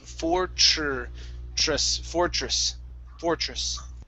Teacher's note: So this is going to be a CHR sound.